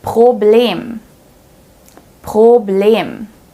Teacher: Since the R is placed right before a vowel here, we pronounce it as the real German R.